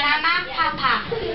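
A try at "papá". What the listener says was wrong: Papa. Ma. You have to say the accent in the right place.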